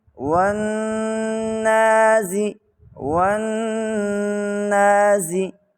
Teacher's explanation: جیسے ہی لام کا نون میں ادغام ہوگا نون مشدد بن جائے گی، تو نون مشدد اور میم مشدد کے اوپر ہمیشہ غنہ ہوتا ہے، اس لیے ہم اس کے اوپر غنہ بھی کریں گے۔